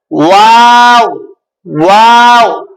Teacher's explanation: दोनों होठ की गोलाई से अदा होता है, वाव, होठ गोल होते हैं